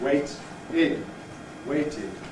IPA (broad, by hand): ˈweɪt-ɪd